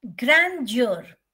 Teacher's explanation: the grand is stress your is unstressed